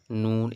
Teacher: এটা হচ্ছে নাকের মধ্যে গুন্না হবে নাকের মধ্যে আওয়াজ আসবে